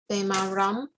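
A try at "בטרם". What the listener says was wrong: That's a tet, so beterem.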